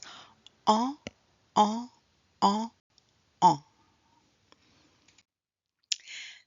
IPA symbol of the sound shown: ɑ̃